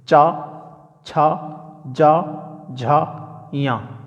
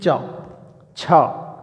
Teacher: जीभ जो है हमारी तालु पे लग रही है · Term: च वर्ग